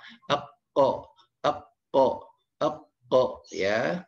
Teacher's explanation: Kemudian ada huruf po ya, seperti huruf ko, seperti k, cuman suaranya agak lebih ke belakang